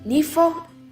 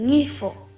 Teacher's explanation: N is often replaced with G.